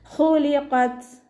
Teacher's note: ത സുക്കൂനിലാവുമ്പോൾ കുറച്ച് എയർ പുറത്തോട്ട് പോണ സൗണ്ടിൽ വേണം ഉച്ചരിക്കാനായിട്ട്